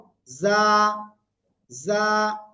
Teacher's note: জিহ্বার আগা সামনে নিচের দুই দাঁতের পেট ও আঘার সাথে লাগিয়ে নরম করে আমরা এই অক্ষরটা উচ্চারণ করব যা ঝিঝি পুকার ন্যায় হালকা একটু আওয়াজ হবে প্রথমে যা এক